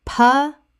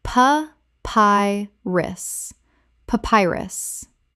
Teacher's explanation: 3 syllables with the stress on the second.